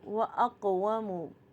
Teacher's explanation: قاف دیکھیے ساکن ہے اور قاف پہ بھی قلقلہ ہو رہا ہے